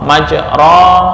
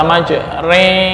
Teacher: fathah kepada ya ya imalah ro maj ro dibaca maj re yang asalnya fathah ya dibaca antara fathah dengan kasrah